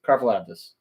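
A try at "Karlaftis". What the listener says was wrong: I think he put an F in there. I think he said Karfalaftis.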